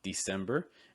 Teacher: Again, you get that sem sound that we've already seen before with that eh. You may also hear December with kind of a long I sound